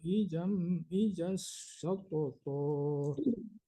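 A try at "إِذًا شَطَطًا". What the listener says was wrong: Bukan idas tapi idan didengungkan ya Pak, jangan ditasdidkan ya.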